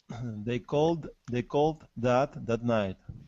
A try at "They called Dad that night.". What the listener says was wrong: Push it together. Don't pause. Don't pause in between the words. It doesn't matter if you don't finish off, okay, because you don't want to.